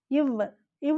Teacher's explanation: கீழதழும் மேல்வாய் பல்லும் இணைவதால் பிறக்கும் எழுத்து